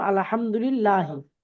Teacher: আল্লাহ শব্দের লামের পূর্বে জের হয়, তাহলে আল্লাহ শব্দের লাম বারিক হবে